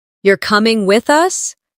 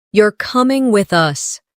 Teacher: The rise in your voice at the end of the question signals uncertainty. While the drop at the end of the statement signals certainty. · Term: intonation